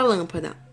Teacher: Aqui eu tenho na palavra lâmpada, última, penúltima, antepenúltima. A sílaba tônica é a antepenúltima, logo vai ser uma proparoxítona.